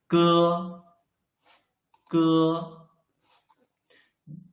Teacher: When we read ge, you can clearly feel that the root of your tongue is blocking the airflow.